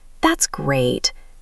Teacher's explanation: But if I'm being sarcastic or I actually think something is bad, my voice stays flat or goes down and I might drag out the words.